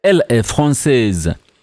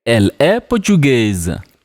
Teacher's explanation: Nationalities that end with AIS, most likely to change them into feminine, you just add an E and then pronounce the S as Z because it's between the vowels.